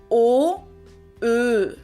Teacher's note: my tongue moves a little bit more forward towards my lips. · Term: Ö umlaut